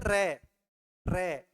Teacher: जीवा मूर्धा भाग के स्पर्श करती है और जीवा 2-3 बार कंपन करती है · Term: लुंठित वर्ण